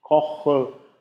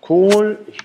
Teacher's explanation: Dann haben wir im Kocher ein offenes O, in Kohl durch die Längung ein geschlossenes O.